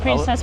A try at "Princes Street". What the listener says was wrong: That sounds like you say princess. I don't think it is princess. It is Prince's. Prince's Street.